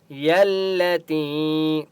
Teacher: یا کو لام کے ساتھ ملائیں گے تشدید کی وجہ سے، ٹھیک ہے، اور مضبوطی کے ساتھ پڑھیں گے۔